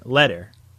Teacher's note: it is most close to a Double T sound in English which is often closer to a d when spoken by native speakers